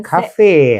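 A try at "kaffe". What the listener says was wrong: Not any air at the end.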